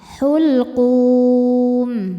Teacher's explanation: Mad tabi'inya waw sukun yang didahului dhammah, huruf yang disukunkannya huruf mim ya, maka dipanjangkan qafnya boleh 2, boleh 4 atau 6 harokat asal konsisten dalam sekali baca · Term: mad arid li sukun